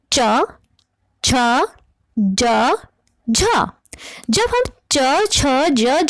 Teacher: संघर्ष ही कहा जाता है MP3 एप्स किस तरह से संघर्षशील इन दोनों के उच्चारण में प्रारंभिक चरण स्पर्श होता है तथा अंतिम चरण संघर्ष होता है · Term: स्पर्श संघर्ष, स्पर्श संघर्षी